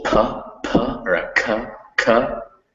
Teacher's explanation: with words that begin with ease and k's in english um there's always this distinctive puff of air